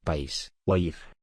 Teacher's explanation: Hiatos, dos vocales que se pronuncian en sílabas separadas.